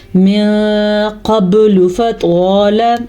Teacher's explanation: یہاں پہ اخفا کا قاعدہ ہو رہا ہے کیونکہ نون ساکن کے بعد قاف حروف اخفا میں سے آیا ہوا ہے، اس لیے ہم نون ساکن کو چھپانے کے ساتھ ساتھ غنہ بھی کریں گے